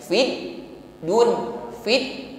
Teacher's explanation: fit tertahan, ya, makhrajnya tertutup dengan sempurna